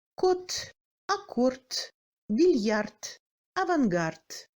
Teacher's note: En fin du mot, le D se rapproche au T.